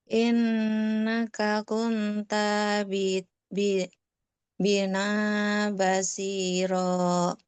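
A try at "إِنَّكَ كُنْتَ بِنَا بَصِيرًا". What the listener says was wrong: Tapi ada beberapa yang perlu diperhatikan. Contohnya ketika membaca bina tadi. Binanya tadi macam nggak panjang. Harusnya dia panjang. Dia harus dua harakat. Bina basiro. Nah, terus yang makhraj yang kasrah. Nah, dia mengucapkan makhraj yang kasrah ini, bibir kita harus betul-betul meringis. Gini ya, i. Ya, jadi bukan innaka nggak gitu dia. Jadi bacanya bener-bener ya, bener-bener sempurna apa namanya kasrohnya. Jadi harus meringis.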